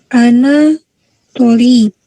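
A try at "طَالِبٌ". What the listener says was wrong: Tolibun, panjang di to.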